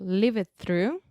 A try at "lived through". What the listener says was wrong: Second thing, you don't want to add the extra ed sound. You just add a soft kind of td sound. Say lived, not livid.